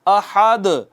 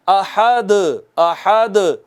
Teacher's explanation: دال ساکن آئی اور کلمہ کے اینڈ پر آئی، تو اس پر ذرا بڑا قلقلہ کرتے ہیں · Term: قلقلہ کبریٰ